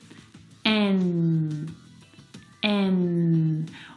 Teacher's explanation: the N sound is made back in the soft pallet. It's a nasal sound.